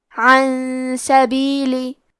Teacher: سین حروف الاخفاء میں سے ہے، تو ہم یہ حکم کو غنہ کے ساتھ ادا کریں گے